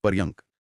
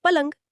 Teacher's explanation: र और य का गुच्छा घिसकर ल बन गया